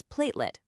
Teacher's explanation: For example, saying platalit with the stress on the wrong syllable might just cause a moment of confusion. The correct way, as we practiced, is platelet with the stress right at the beginning. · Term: word stress